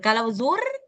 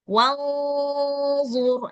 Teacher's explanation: Di sini ada ro sukun kemudian ada huruf d huruf dini berbaris damah. Maka ro sukun harus dibaca tafkhim.